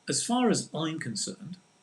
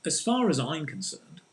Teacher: get the stress on i'm